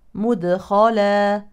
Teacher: لو وقفنا نقف على تنوين النصب بالف عوضا عن نون التنوين الساكنه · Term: مد عوض